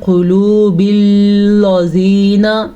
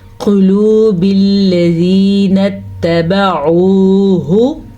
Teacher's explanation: لام کو نہ تو موٹا کر کے پڑھنا ہے نہ لام پہ رکنا ہے